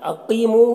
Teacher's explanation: قوف کو پر پڑھیں گے، یہ حروف مستعلیہ میں سے ہے اور یا مدہ ہے، ایک الف کے برابر کھینچیں گے۔